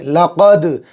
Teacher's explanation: بڑا قاف نکالیں گے گلے کے جو ہے سینے کی طرف والا حصے سے ، لقد، دال کے اوپر جزم میں قلقلہ ہوگا، آواز ٹکر